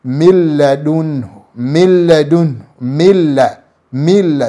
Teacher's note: Milladun, milladun, milla, milla. So min usidhihirishe hii nuni, utaingiza katika lamu na utaitamka lamu kama vile yenye shada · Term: idghamu bighairi ghunna